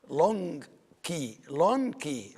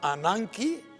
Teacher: the gamma pronounced as an N because it's followed by the key